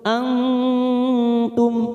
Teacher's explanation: nun sukun bertemu ta namanya Ikfa Hakiki kita samarkan tiga ketuk